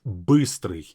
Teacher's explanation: So you simply say «e», is the same mouth position, but the tongue is slightly back. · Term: «ы» sound